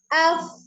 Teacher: A secara makhraj huruf hamzahnya daripada tenggorokan bagian bawah, kemudian A cara pengucapannya mulutnya dibuka.